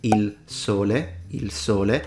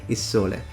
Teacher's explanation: some people who speak with a Tuscan accent will cancel out the L and just say il sole. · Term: affrication of the S